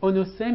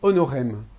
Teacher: la transformation du S intervocalique ici en R. Donc onosem est devenu honorem.